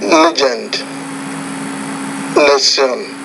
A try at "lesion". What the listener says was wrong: So the lesson 16, it's the second sound. You understand how to pronounce the J, but it's the palatal consonant, the J. Measure, Frazier, lesion, azure, Asia. It's that J. That sound is harder for you.